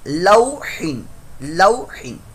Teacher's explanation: یہاں پر واو ساکن سے پہلے زبر آ رہا ہے، تو واو ساکن سے پہلے زبر ہو تو یہ واو لین کا قاعدہ ہے، اس کو لمبا نہیں کرنا · اور ہا کی آواز حلق کے درمیان والے حصے سے نکلے گی